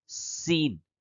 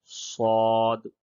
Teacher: سین میں سیٹی کی آواز نکلتی ہے، جبکہ صاد یہ بغیر سیٹی کے اس کی ادائیگی ہوگی